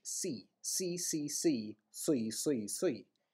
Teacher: Again, the Irish consonant is deeper because the tongue is... the back of the tongue is raised to the velum, so the soft palate or the soft part of the roof of the mouth at the back.